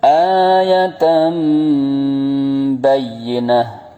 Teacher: suara nun sukun diganti mim sukun disertai dengung yang lama. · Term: iqlab